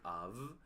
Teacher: correcting the pronunciation of the word of, right? It's labiodental, and in Venezuela we tend to pronounce of, but o la V, la V pequeña la pronunciamos como una B, and it's not like that.